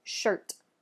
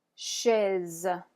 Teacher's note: All right, next, a sound that's very different in French than it is in English is going to be the CH sound. So the French CH is going to be a soft sound. It's going to be the equivalent to our SH sound in English, like shh, or like in the word shirt.